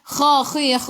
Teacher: Kha khi khu biar ada angin biar menggelegak.